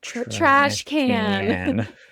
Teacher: we're going to use the American A, and then we're also going to get up in our nose and use that nasally sound as well for trash can